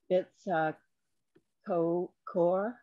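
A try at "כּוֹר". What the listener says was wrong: So there's no dot in that chaf.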